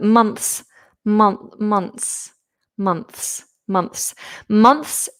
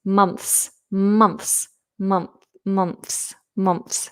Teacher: It's a mouthful because you've got the th into the s. This is again the tongue gymnastics that goes from one position to another quite quickly.